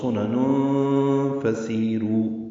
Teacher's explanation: سی یا مدہ ہے، 2 حرکات لمبا کریں گے. صفیر کی آواز سے سین ادا ہوگا باریک. · پھر تنوین ہے نون پر اور اس کے بعد فا آنے کی وجہ سے اخفا ہوگا. سنن فسیرو پڑھیں گے.